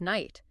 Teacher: speakers just got tired of making those difficult sounds and dropped them, streamlining the pronunciation to just night